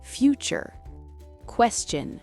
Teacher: Mais attention, dans beaucoup de mots courants, la lettre T ne se prononce pas T. Lorsqu'elle est suivie de la lettre U, le T glisse vers le son t comme tch.